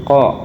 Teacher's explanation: bunyi langit-langit belakang, terus adanya letupan, bersuara dan tebal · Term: huruf Qof